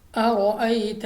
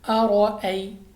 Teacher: اب سب سے پہلے ہمارے پاس را پر زبر، را کو بور پڑھیں گے یعنی منہ اور آواز کو کھول کر، اور یا ساکن سے پہلے زبر آ گیا تو یا لین یعنی بغیر کھینچے بغیر جھٹکا دیے پڑھیں گے، یعنی لمبا ہم نے ہرگز نہیں کرنا